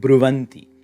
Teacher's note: Notice here again, an odd internal sandhi, where bru plus anti is going to make that long u become shortened, and then you add your internal, inside you add a semivowel va.